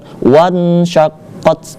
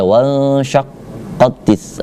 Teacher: Nun matinya dibaca samar-samar karena ketemu huruf sya. Syaqqat. Dibaca bukan wan syaqqat, tidak.